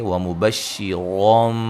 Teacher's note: نون تنوین کا یہاں اقلاب ہے، نون کو میم سے بدل دیں گے